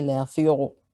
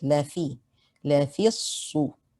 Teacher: Be careful not to make the fa heavy. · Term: fa is light